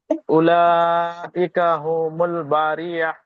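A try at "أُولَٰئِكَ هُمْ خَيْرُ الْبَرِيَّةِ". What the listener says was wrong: উলাইকা হুমুল হবে না, হুম খয়রুল বারিয়া।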